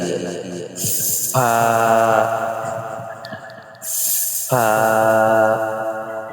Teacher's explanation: নিচের ঠোঁটের পেট সামনের উপরের দুই দাঁতের আগার সঙ্গে লাগিয়ে